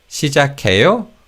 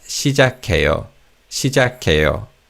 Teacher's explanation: But because this isn't a question, this statement is said with a falling tone at the end. So it's not 시작해요, but 시작해요, 시작해요.